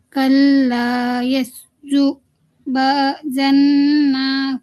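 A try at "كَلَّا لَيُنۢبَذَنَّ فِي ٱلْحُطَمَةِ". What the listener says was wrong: دوبارہ پڑھیے. یہ ہاں لام سے پڑھیے، یہاں پہ پہلے لام ہے. کلا لیم.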